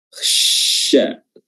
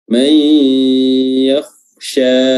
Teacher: Makhraj huruf shin adalah pertengahan lidah itu diangkat dan hampir bertemu dengan langit-langit tengah, ya, dan mengalirkan nafas ke seluruh bagian rongga mulut